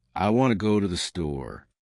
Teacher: In this sentence, want and store are stressed, and the other words are said quickly and softly. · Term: sentence stress